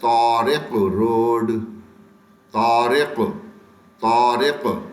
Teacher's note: त मोटा करके पढ़ेंगे